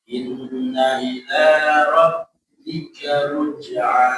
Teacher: Roknya ditasdid ya, Bapak ya, ditekan.